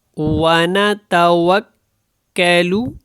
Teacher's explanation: اس کاف کو جو ہے وہ باریک پڑھیں اور لو کو لمبا نہ کریں